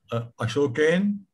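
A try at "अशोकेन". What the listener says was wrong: You say Ashokena full. Otherwise it is wrong. Ashokena.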